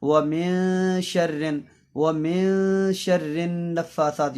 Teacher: غنہ کے اندر پوری آواز ناک میں چھپتی ہے، اور اخفاء کے اندر آدھی آواز ناک میں چھپتی ہے